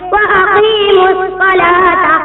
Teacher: الف لام نہیں پڑھا جائے گا اور حرف شمسی کو مشدد کر کے پڑھیں گے، جیسے وَأَقِيمُوا الصَّلَاةَ، اس کو ادغام لام تعریفی کہتے ہیں۔